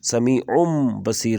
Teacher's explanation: پیش کی تنوین کو ہم میم میں بدل دیں گے۔ نون کی آواز جو ان کی آواز تھی اس کو پڑھیں گے، سمیع بصیر، کیونکہ با آگے آ رہا ہے۔ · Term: اقلاب